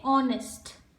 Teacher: The letter H is silent in the word honest. So when we read honest, when we pronounce this word, this letter H, it goes silent.